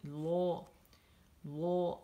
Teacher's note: या इस्मुल जलाला से पहले या ज़बर है या पेश है, तो उस वक्त ये लाम मोटी होती है।